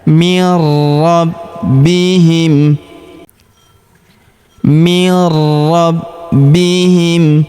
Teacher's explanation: Huruf b kita tahan dan tekan juga karena terdapat tanda tasydid di atasnya.